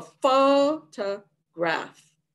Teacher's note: the first syllable foe is the major stress it can also be called strong stress primary stress or strongly stressed the second syllable the photograph has no stress because there's no